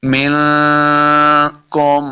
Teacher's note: نون ساکن کے بعد کاف بھی حروف اخفاء سے ہے، تو یہاں پہ ہم نے اخفاء یعنی غنہ کرنا ہے